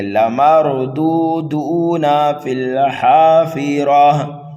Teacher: پہلے دال کو اور دوسرے دال کو دونوں کو کھینچ کر کے پڑھیں گے، نون کو جلدی پڑھیں گے۔ لمردودون فی الحافرہ، حافرہ، را کو پر پڑھنا ہے، یہاں پر وقف بالابدال ہوگا۔